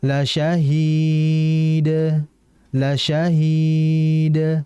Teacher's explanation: Nah, jadi langsung dipantulkan ya. Hati-hati dalam memantulkan qalqalah dalnya, jangan terlalu cepat.